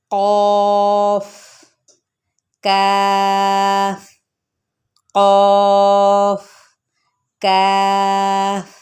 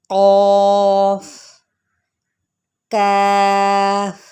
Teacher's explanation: یہ زبان کی جڑ اور تالو سے ادا ہونے والے حروف ہیں